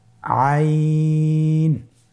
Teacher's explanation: আইন আবার বলুন আইন আইন আর হরফটি কন্ঠনালীর মধ্যখান থেকে উচ্চারিত হয়